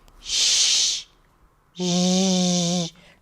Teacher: So it's right behind that bump, post-alveolar, and it's a fricative. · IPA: /ʃ/ - /ʒ/